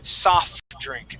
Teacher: Okay, a lot of people want to pronounce this and use your diction to say soft drink and pronounce that T, when in reality, when we pronounce this word, we sort of combine them and we say soft drink, without pronouncing that T